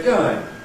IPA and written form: ˈgəɪŋ (going)